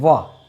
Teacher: व का उच्चारण स्थल कौन सा है, दंत और ओष्ठ। हम बोलते हैं वाह, वाह बोलते हैं तो अपनी जो जीवा है, जो प्राणवायु है, दंत और उष्ठ से निकलती है और क्या हो जाएगा, ये दंतुष्ट है।